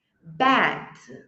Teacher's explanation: A boca tá mais aberta e é como se você quisesse falar um A, mas fala um E.